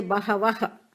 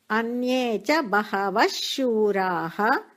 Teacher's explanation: बहवः शूरा. Vash, double S there, because S follows a visarga, no ha sound. You should not say bahavah.